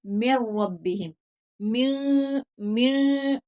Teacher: नून की आवाज नहीं आनी चाहिए, मीम को रा से मिलाना है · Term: इदगाम बिला गुन्ना